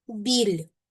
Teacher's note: Біль позначаємо напівпом'якшеність звука б.